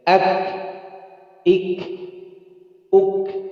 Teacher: Nah, itu baru keluar hams. Jadi antri, syiddah dulu, tekan dulu, baru hams. · Dia hams, tapi punya sifat juga syiddah, tertekan, tertahan. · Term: huruf kaf